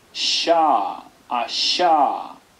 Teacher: Esta es la palatal según la gramática sánscrita y según el alfabeto fonético internacional, fricativa postalveolar sorda